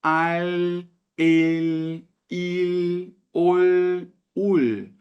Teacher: pronunciada tal como no português L le li lu lu Porém quando ela está no fim de uma palavra ou então antes de uma consoante a gente precisa pronunciar colocando a ponta da língua lá no céu da boca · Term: letra L